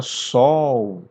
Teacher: na palavra sol, o L tem som de U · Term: semivogais